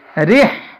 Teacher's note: اس را کو ہم باریک پڑھیں گے